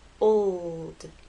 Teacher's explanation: the o to the L and finally into the D old it's important to make the L long enough so that it's heard